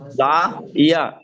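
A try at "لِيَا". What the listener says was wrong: লাম জের লি, ইয়া জবর ইয়া, লা ইয়া। লাম জের লি পড়লাম আর পড়ার সময় বলছি লা। লি ইয়া, ইয়া জবর ইয়া, লি ইয়া। আর আপনি সেখানে বলছেন লা ইয়া, লাম জের লি পড়ছেন আর তারপর পড়ার সময় লা লা পড়ছেন আপনি তখন। লাম জের লি, ইয়া জবর ইয়া, লিয়া। লিয়া।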